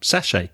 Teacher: we don't pronounce the t because it's french